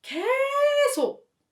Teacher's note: In Korea, when you want to emphasize the word 계속, you elongate 개 when pronouncing like 계속.